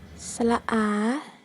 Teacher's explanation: 發音時舌身降低往後縮，舌後部稍抬起，舌尖離開下齒齦，口型張大，口腔肌肉鬆弛，唔圓唇發出音。